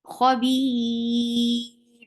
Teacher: Ra will be light at the end. It will get sifa of tawassut, but it will be light. Why? Because ra with sukoon, if it is followed by ya, the ra will get the sound of ra will get light.